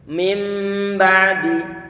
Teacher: Nun sukun dengan ba. Ringannya adalah nun sukun ini diganti dengan huruf mim. Sebagaimana huruf N dalam bahasa Indonesia di saat dia bersebelahan dengan huruf P ataupun mungkin huruf P, maka huruf N-nya pengucapannya lebih mudah kalau kita ganti dengan huruf M. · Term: iqlab